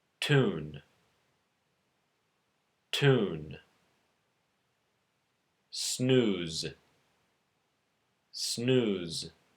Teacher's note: made with the tip of the tongue and the front part of the roof of the mouth just behind the teeth